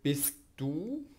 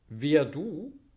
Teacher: Hier das Beispiel bist du. Durch die progressive Stimmlosigkeitsassimilation wird das du entstimmlicht. Aber in wer du, aufgrund der Umgebung, kommt es nicht zu einer Entstimmlichung.